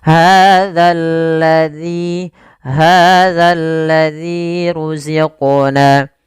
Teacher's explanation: hati-hati dalam melafalkan zal, jangan dibaca hazal lazi, diganti dengan huruf zai, nanti merubah makna.